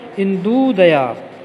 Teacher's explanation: दोनों ओर ह्रस्व ऊ है तो दोनों को जोड़कर इंदुदया, इसमें दीर्घ ऊ हो जाएगा।